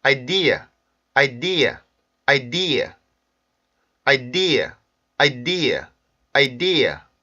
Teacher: 강세가 첫 번째 있지 않다라는 거, 그리고 음절 끝에 있는 슈아에서 R 발음을 넣지 않는 거